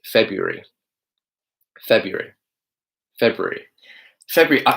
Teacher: to really make this pronunciation easier for you, just get rid of that R completely.